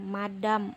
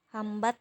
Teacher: dan n i Hai fonem konsonan nasal bilabial MP3 terbuka dari kedua bibir dikatupkan kemudian udara dilepas melalui rongga hidung